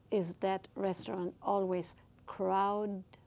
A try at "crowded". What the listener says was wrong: Crowdy, no. Crowded. Con D al final. Crowded.